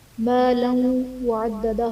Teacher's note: مالا وعددہ میں لام پر دو زبر کی تنوین ہے، تنوین کے بعد حروف یرملون میں سے واو ہے، تو یہاں پر ادغام مع الغنہ کا قاعدہ ہوگا، یعنی تنوین میں ہم غنہ کر کے پڑھیں گے۔